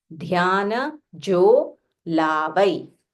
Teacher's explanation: This is Mahaprana dha. So, and it is only half matra. So you can say dhyana, dhyana with an aspiration.